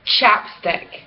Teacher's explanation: voiceless post alveolar affricate